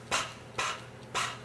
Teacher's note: it's voiceless because pa. We do not feel any vibration.